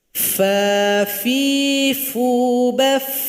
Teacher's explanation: Ketika sukun masih ada bunyi aliran nafas.